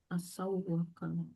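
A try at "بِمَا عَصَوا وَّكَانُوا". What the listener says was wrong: takutnya didengung. Kalau didengung kan berarti panjang ya, ditahan. Kalau ini tidak ditahan, hanya ditekan. Asaw wa kanu.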